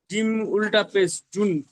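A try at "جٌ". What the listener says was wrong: উল্টা পেশ না, দু পেশ, একটা সিধে পেশ একটা উল্টা পেশ। দু পেশ হয়ে গিয়েছে। হ্যাঁ, জিম দু পেশ জুন। জিম দু পেশ, ওটা বলেন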